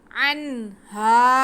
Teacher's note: فَأَزَلَّهُمَا الشَّيْطَانُ عَنْهَا، عین پہ زبر اور نون ساکن، عین کو نون کے ساتھ ملائیں گے اور نون ساکن کے بعد ہا آ رہا ہے ہمارے پاس، حروف حلقی، حروف اظہار میں سے ہم نون کے آواز کو واضح کر کے پڑھیں گے، اور ہا کے ساتھ آگے الف ہے تو ہا پہ زبر، الف ساتھ میں الف، اور یہ الف مدہ ہو گیا، ہم ہا کو کھینچیں گے۔